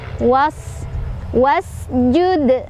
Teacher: Was, alif depan wawu tidak dibaca, jadi kita langsung bacanya ke sin aja. Was, dan sinnya punya sifat hamas dan sofir. Hams ada angin, sofir ada desisan.